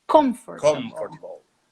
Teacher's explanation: O M, ele é bilabial. Bilabial significa que você põe os lábios juntos para falar.